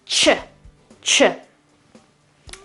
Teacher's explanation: So if we have T and sh together, it becomes ch, ch.